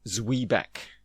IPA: ˈzwiːbæk